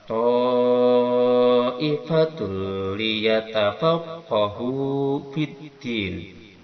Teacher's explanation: Ta'ifah, ta ini ada mad wajib muttasil yang wajib dipanjangkan 5 harokat.